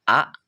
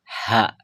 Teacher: hamzah dan juga hak itu berbeda dalam pola pembacaannya kalau misalkan Hamzah itu dibaca a sedangkan H itu dibaca ha jadi ada awalan H ada seakan-akan ada huruf h nya gitu pas di awalnya itu